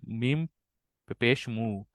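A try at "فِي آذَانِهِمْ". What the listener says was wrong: না, এখানে হা এসে মিমকে ধরবে, এটা পেশ না, এটা সুকুন। হা মিমজের হিম। হ্যাঁ,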